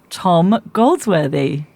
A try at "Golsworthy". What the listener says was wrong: But I think you added a D in there. I think it's Golsworthy.